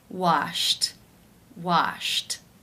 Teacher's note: pronounce this word the final sound an infinitive form is Shh the unvoiced SH sound since it is unvoiced it is case one where the ed is pronounced as a tee